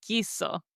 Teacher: We don't pronounce the U. It's like it was written G I S O. We go straight to pronouncing the I.